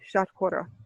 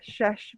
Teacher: in Bengali, all of the s, sh, sibilant sounds were just all neutralized to sh